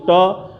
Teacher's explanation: टा मूर्धन्य से बोला जाएगा, जीभ आपके पीछे चली जाएगी